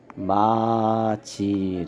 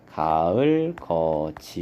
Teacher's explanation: 디귿이 이 모음이랑 만나면 지읒으로 바뀌어서 소리가 나죠. 그래서 마지라고 발음이 된다. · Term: 국외음화